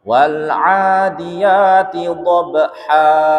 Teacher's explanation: Namanya mat iwad wajib dua harokat saja.